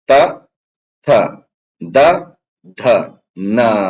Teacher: ನಾಲಿಗೆ ಹಲ್ಲಿಗೆ ಒತ್ತುವುದರ ಮೂಲಕ ಈ ಅಕ್ಷರಗಳು ಉತ್ಪಾದನೆ ಆಗ್ತವ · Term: ದಂತ್ಯ ಧ್ವನಿಗಳು